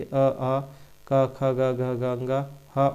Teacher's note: इनका उच्चारण जो है कंठ से होता है